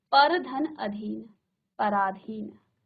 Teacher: देखिए अ धन अ मिलकर के आ बनाते हैं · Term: स्वर संधि